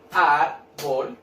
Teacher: Cargo la voz en la sílaba ar. Y lleva tilde porque termina en cualquier consonante que, ¿cierto?, no sea N, S o vocal. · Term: palabra grave